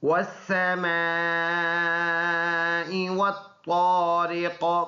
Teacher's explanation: یہ والا را باریک ہے کیونکہ را کے نیچے زیر ہے، اور یہ والا قاف یہ پر ادا ہونے والا حرف ہے، اور جب ادھر وقف کریں گے تو یہ زیر سائلنٹ ہو جائے گا، ادھر سکون ہو جائے گا، پھر اس قاف میں قلقلہ بھی ہوگا کیونکہ قلقلہ کے 5 حروف میں سے ایک قاف بھی ہے